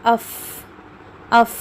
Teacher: تو اوپر کے سامنے کے 2 دانت لگ رہے ہیں، تو اوپر کے سامنے کے 2 دانتوں کا کنارہ، اوپر کے سامنے کے 2 دانتوں کا کنارہ جب ہمارے نیچے کے ہونٹ کو لگ رہا ہے تو اس سے نکل رہا ہے اف